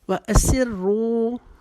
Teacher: رو کو ہم موٹا پڑھیں گے اور ایک الف کی جتنا کھینچیں گے